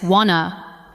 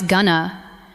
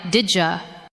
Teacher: want to is often heard as wanna, going to becomes gonna, and did you can sound like didja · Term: connected speech